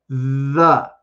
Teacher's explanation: i add my voice to get the the sound but if i take away my voice there's not that vibrating th part of it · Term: voice sound